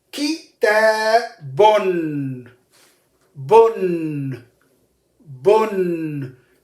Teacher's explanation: So the pronunciation of the tanween is an extra noon with sukoon comes with the tanween.